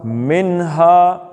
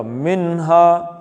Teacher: نون ساکن کے بعد ہے آ گئی ہے، ہا ہلکی ہے اس لیے نون کا اظہار ہوگا،